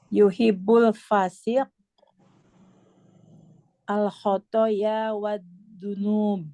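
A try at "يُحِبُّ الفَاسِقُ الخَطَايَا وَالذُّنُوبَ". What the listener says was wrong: kurang ini kedengaran sedikit nih. Di kata yang kedua, panjang pendeknya coba ditegasin lagi. Ini yang di sebelah kanan kata yang keduanya.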